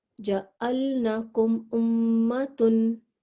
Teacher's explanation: میم کی آواز کو نہ تو چلائیں گے اور نہ ہی غنہ کریں گے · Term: اظہار شفوی